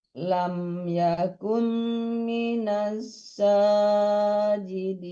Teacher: Yang panjang itu bukan ji-nya tapi sa-nya, Ibu.